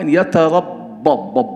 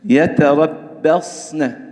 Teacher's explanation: harus tetap dijaga tipisnya huruf ba ini, tidak boleh terpengaruh tebalnya huruf sod. Sedangkan sod juga harus tetap kita jaga tebalnya sifatnya, yaitu sofir, kemudian rokhawah yang harus kita jaga.